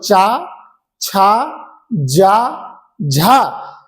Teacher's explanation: च, छ, ज झ इनमें क्या हो रहा है? घर्षण हो रहा है इसलिए इन्हें स्पर्श संघर्षी कहा जाता है।